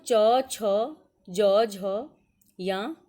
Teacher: इसका उच्चारण स्थान तालु है। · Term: च वर्ग